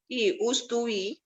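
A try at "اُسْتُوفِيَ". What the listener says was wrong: One more harakah for the fa. Ui sound.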